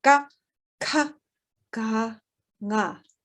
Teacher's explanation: You feel the back of your tongue against your palate in the back of your mouth.